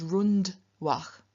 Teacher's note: So even though there is an R preceding, the N does not change into a retroflex N, because it is followed by a dental dh, and so it just remains a dental N in front of the dental dh